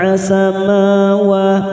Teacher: huruf ba sukun warna biru namanya qalqala sugro karena mati di tengah kalimat kita pantulkan